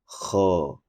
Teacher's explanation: Huruf ko itu dibaca dengan cara hames, yaitu ada terdengar suara nafas pada saat dibunyikan kho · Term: hams